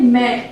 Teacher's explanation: अब यहाँ इसका उच्चारण करने पर नाक और मुख दोनों से ध्वनि निकल रही है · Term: अनुनासिक